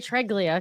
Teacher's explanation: Well, my sister speaks Italian, and she said every single letter is always pronounced, and also the second to last syllable is where the accent is